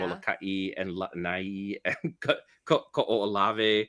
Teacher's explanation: you're hearing that Okina, which is a glottal stop. It's an unpronounced consonant that implies that there's a gap.